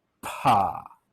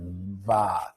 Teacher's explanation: you get a puff of air there because your vocal cords, okay, are actually apart when you produce the p sound for pa. And the air rushes between your vocal cords and out your lips.